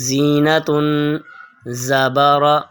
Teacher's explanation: ذا کی آواز سخت، باریک اور سیٹی کے ساتھ ہوگی